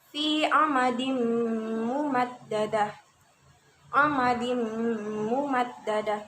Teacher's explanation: Ingat ya, nama waya atau ya nama wa. Maka bunyi nun sukun atau tanwin melebur ke huruf sesudahnya disertai dengungan atau gunnah seukuran 2 harokat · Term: idgham biguna